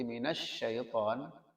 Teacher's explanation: Kalau toh ada panjang seperti minasyaiton, maka itu bukan panjangnya tasdid. Itu adalah mengalirnya shin, mengalirnya suara sin, karena shin itu ya memiliki sifat rikhwah.